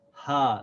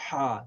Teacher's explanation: in the throat so we say ah this is not ha see when we say hi like the English age that sound comes from the chest this ha is constricted here in the throat